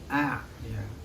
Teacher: mahroj yang keluar pada tengah tenggorokan yaitu huruf Ain